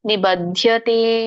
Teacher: ಬಕೆ ಮಹಾಪ್ರಾಣ ಇಲ್ಲ ದಕ್ಕೆ ಮಹಾಪ್ರಾಣ ಇದೆ